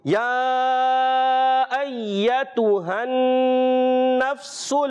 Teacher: سین کی ادائیگی کلیئر سیٹی کے ساتھ